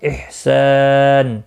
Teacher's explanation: الف مدہ ہے ایک الف کے برابر کھینچ کر پڑھیں گے ، وقف کی صورت میں نون ساکن پڑھا جائے گا، وقف